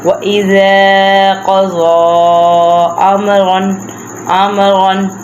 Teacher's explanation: پہلا حرف زبر والا، دوسرا خالی الف ہے، اس لیے ہم اذا کو بھی لمبا کریں گے